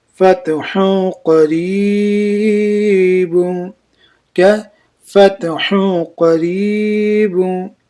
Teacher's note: मैं फा ताज वरफत, हा दो पिस हूँ, अब हा दो पिस हूँ के बाद क्या है, हुरूफ इख्फा के 15 हरफों में से क़ाफ आया इसलिए इख्फा होगी, और इख्फा को एक अलीफ के मिकदार खींच कर पढ़ेंगे, और नून को क्या करना है, नाक में छिपा कर पढ़ेंगे